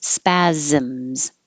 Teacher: These look like S's. The first one is an S, but the second ones are Z, second and third.